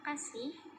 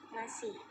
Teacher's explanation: Terjadi kesalahan pengucapan pada kata kasih menjadi ngasih dengan perubahan bunyi konsonan K menjadi klaster eng.